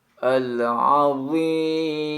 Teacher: dipanjangkan boleh2 4-6 harokat karena merupakan kaidah Mad Arid lissukun